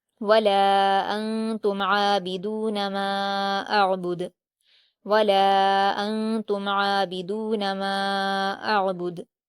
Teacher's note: آگے دیکھیے حمزہ پر حرکت ہے، عین پر جزم ہے تو حمزہ کو عین سے ملائیں گے، با پر حرکت ہے، دال پر حرکت ہے اور دال پر وقف کرتے ہوئے جزم میں بدل دیں گے اور وہاں پر قلقلہ ہوگا۔